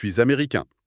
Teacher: l'homme reste sur le masculin américain en gardant la voyelle nasale